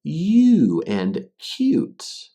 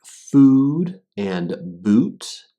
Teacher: The oo sound in words like food and boot, and the u sound in words like you and cute. Basically, the difference is u starts with the y sound and goes into the oo sound, but the oo sound is just oo on its own